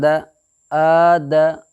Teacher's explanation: زبر کو جلدی پڑھیں، تھوڑا بھی نہ کھینچیں، زبر کی آواز اوپر کو اٹھتی ہے